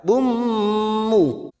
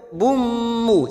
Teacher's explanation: dumat tanwin bertemu mim idgham bigunnah, kita tekan selama 3 ketuk. Bummu, siap masuk ke huruf mim, namanya bacaan idgham bigunnah.